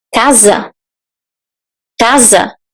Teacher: we write s but we have the z sound why because we have an S between vowels